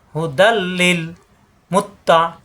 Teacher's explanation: এই তানবিনের পরে আসছে লাম, এই লামে তাসদিদ ধরে গুন্না ছাড়া মিলিয়ে পড়তে হবে। ঈদগামে বেলা গুন্না, কোনো গুন্না হবে না।